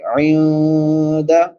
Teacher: عین ہے، وسط حلق سے حلق کے درمیان سے ادا ہوتی ہے. نون ساکن ہے، بعد میں حروف اخفا میں سے دال ہے تو یہاں پہ اخفا کریں گے.